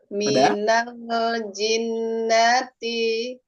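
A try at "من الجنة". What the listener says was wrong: ini ditahan dua ee sebenarnya ada materinya belum tersampaikan ya yang nun bertasydid ya.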